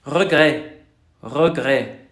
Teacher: Hagan una J muy fuerte. J. Y a esa pónganle voz. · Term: el sonido de la R